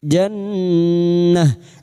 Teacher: Habul lam ta'rif yang bertemu jim idhar qamariyah. Jannah nun yang bertasdid gunna musyaddadah dengungan selama 3 harokat